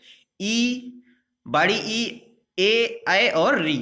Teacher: जब ई बोलेंगे तो आप देखेंगे कि जीभ के अग्र भाग से इसका उच्चारण हो रहा है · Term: अग्र स्वर